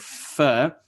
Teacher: my top teeth are touching my bottom lips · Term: labiodental